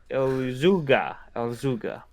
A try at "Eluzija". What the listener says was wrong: Why do you pronounce J's as G's? Eluzija. Eluzija.